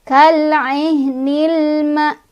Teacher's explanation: haknya ini dari tenggorokan ya, jangan didorong dari dada.